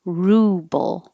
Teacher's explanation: the vowel is ooh and you really round your lips